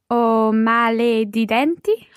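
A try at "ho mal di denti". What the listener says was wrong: Okay, just watch your male. It's not male, it's mal. O mal di denti.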